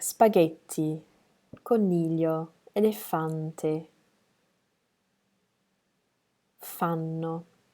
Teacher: all of those have the stress on the next to last syllable